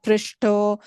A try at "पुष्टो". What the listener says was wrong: Just in the first line, Tvaya Pushto. You said Pr, Pu. So Pushto? Yeah, I'm just saying change it to Pu. Yeah, Pushto.